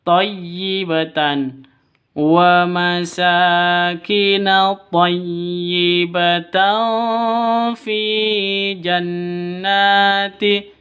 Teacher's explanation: Nun tanwin bertemu dengan fa, samar, didengungkan, siap-siap ke huruf fa-nya. Kenapa? Karena ikhfa hakiki. · Wa masa, sa di sini panjang 2 ketuk. Ada alif diawali dengan fathah. Harus dibaca panjang 2 ketukan karena mad asli.